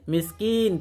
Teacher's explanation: এখানেও গুন্না নেই তবে মদ আছে মিসকিন তিন আলিফ টান